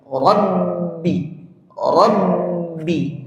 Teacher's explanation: ketika dia tasydid maka menekan kuat pada makhraj dua bibir ini. Rabbi, rabbi.